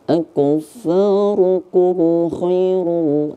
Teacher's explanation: Maka tidak kita dengungkan. Maka kita membacanya jelas. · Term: izhar syafawi